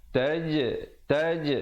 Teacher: ada qalqalah di situ, qalqalah sughra, pantulkan